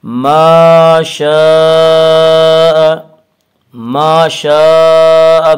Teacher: صورت ما شاء، ما الف مدہ، الف ہمیشہ مدہ ہوتا ہے، الف سے پہلے ہمیشہ زبر ہوتا ہے، الف مدہ کو 1 الف کے برابر کھینچ کر پڑھیں گے